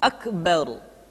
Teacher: huruf ro mesti dibaca tafkhim atau dibaca dengan suara yang tebal ketika dia berharakat fathah atau berharakat dah kemudian ra sukun didahului